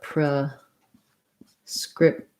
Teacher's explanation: i say that it has second syllable stress so i say the pre with the schwa like pra pro